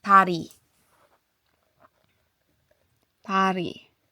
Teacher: be more on T with a hint of D.